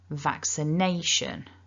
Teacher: we've got four syllables and we've also got a double stress · or the main stress so what we're aiming for is vaccination so vac is a bit stronger and nay is even stronger